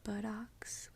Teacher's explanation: depending on how you say it some people say Butt Talks some people say buttocks with the little soft D sound